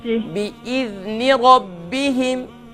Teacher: Don't do قلقلة on the ذال. Make soft and control.